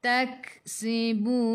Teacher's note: Sebelum huruf akhir ada waw yang tak ada baris, ma'arili sukun, boleh baca 2, 4 atau 6 harakat. Matikan dengan huruf nun, hujung lidah menyentuh gusi atas. · Tak sikit sahaja angin pada huruf ka, sifat hurufnya hamas. Taksibun. Sebelum huruf akhir ada waw yang tak ada baris, ma'arili sukun, boleh baca 2, 4 atau 6 harakat.